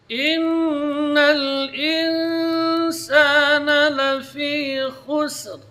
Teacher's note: Kemudian di sini juga dua sukun, yaitu sin dengan ra. Maka ra, sin dibaca tipis dan ra-nya dibaca tebal karena sebelumnya dhammah.